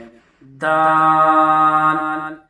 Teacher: اسی طرح خا کو نکالنے کے لیے منہ کی طرف والا جو حصہ یعنی سب سے اوپر کا حصہ، تو وہاں سے خا نکالیں گے، خا۔ دال، جو زبان کی جو نوک ہے اسے سامنے کے چوڑے سے جو دو دانت ہیں ان کی جڑ پر لگائیں گے تو دال بآسانی ادا ہو جائے گا، دال۔